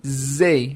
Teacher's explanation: Se eu não colocar a língua, vai ficar zay. Fica um som mais de Z